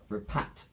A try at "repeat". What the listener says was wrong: There needs to be an E in there for repeat.